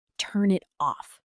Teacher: 3 words on paper, but in real speech, it sounds almost like turn it off. The N at the end of turn links directly into the I in it. It just glides right through.